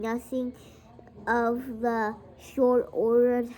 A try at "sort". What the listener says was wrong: it's not short there's no h sort